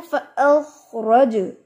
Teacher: जीम को मैंने साकिन करके जीम पर मैंने इको बनाई है, फ़अख़रज पढ़े इसको, रज नहीं पढ़ना, रज आवाज पलट के आती है, रज। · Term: कलकला